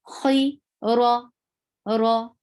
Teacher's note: Ra is heavy. Why? Because there is fatha on ra.